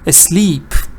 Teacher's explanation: that long e that's not a schwa this is a long e a sleep that parrot was asleep